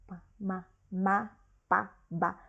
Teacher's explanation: São aquelas que eu encontro os lábios, ma, pa, ba, para poder pronunciar. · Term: consoantes bilabiais